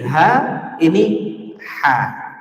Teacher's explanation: ha itu pangkal tenggorokan dekat makhraj huruf hamzah